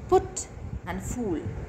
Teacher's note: the lips are rounded. So the vowels are rounded here.